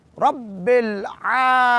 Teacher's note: العالمین کی عین کو مڈل آف تھروٹ یعنی حلق کے درمیانی سے یا واسطے حلق سے عین کو ادا کریں گے۔ رب العالمین، عین کو 2 حرکات کے برابر لمبا اور می کو بھی 2 حرکات کے برابر لمبا کریں گے۔